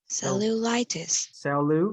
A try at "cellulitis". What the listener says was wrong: No, you don't put the pronunciation on the first two. So it's cellu. See how my first two syllable I'm flat here, and then the third one I'm up. That means like it's up, down, up, down. Just go flat and then up.